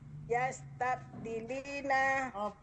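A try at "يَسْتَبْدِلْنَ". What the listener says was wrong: Dimatikan. Yastabdilna. Ya, dimatikan kalau hunna, antuna, huruf ketiganya dimatikan, disukunkan. Ya, yastabdilna.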